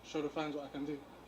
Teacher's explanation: he used a d sound right because it was very loose